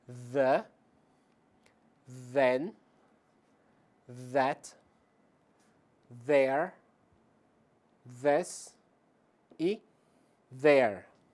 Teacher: voiced, onde há vibração das cordas vocais.